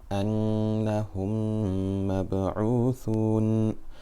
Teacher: So remember, whenever we have a meme sakina followed by another meme, we do ghunna for 2 harakat. This is called idgham shafawi. It is a merging of the lips. And with that, we'll end this lesson, inshallah.